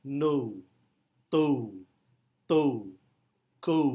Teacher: para native speaker khususnya American English native speaker biasanya mengucapkan vowel ini sebagai diftong diftong ou ou ou adalah close meid backgrounded vowel bisa kita